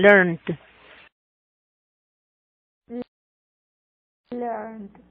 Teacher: Si termina el verbo en una N, siempre ese ED se va a pronunciar como una D.